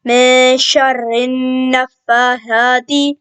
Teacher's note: یہاں پہ را کو ہم نے باریک پڑھنا ہے کیونکہ اس کے نیچے زیر ہے